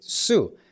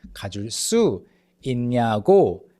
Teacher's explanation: even though there's a space between 줄 and 수, 줄's ㄹ still affects 수 and it makes it 쑤